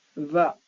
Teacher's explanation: When you pronounce va, this is VINE, for example, va. So your upper teeth touch the lower lip.